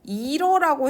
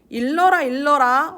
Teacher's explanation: 자, 그래서 이 이르라고 할 때 이 르가 리을로 바뀌니까 앞말의 받침으로 리을 하나 오고 뒷말 초성으로 리을 하나 보내서 일러가 되는 거예요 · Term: 르 불규칙